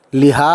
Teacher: حلق سے آواز آئے گی اس بڑی ہے کی